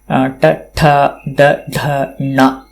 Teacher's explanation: पुनः टवर्ग उच्चारणे ट, ठ, ड, ढ, ण इत्यत्र साक्षात् जिह्वा मूर्धानं स्पर्शयति।